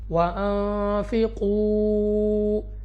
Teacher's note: واو ساکن سے پہلے پیش، واو مدہ ہے، 2 سیکنڈ تک کھینچ کر پڑھیں گے